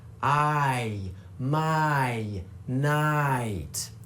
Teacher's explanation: Can you hear how that I sound is actually two sounds pushed together? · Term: dip thong, diphthong